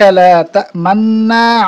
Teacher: লা তা'মান্না পড়ার সময় নাকের মধ্যে গুন্না অবস্থায় 2 ঠোঁট গোল করতে হবে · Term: উজুবে ইসমাম